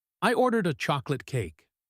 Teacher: She puts the stress on the word chocolate.